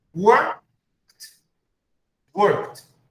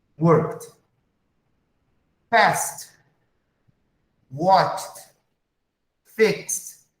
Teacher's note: K, P, SS, SH, or X, the sound is like T.